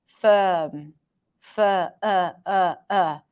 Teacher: vowels closer to a schwa sound firm for uh uh uh so there is a vowel there it's just very neutral